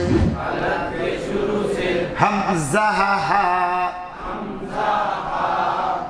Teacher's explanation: मखरज हलक के शुरू से हमज़ा हा